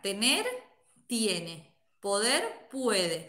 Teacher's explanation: La E se abre a Y y la O se abre a UE. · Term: diptongación de E y O breve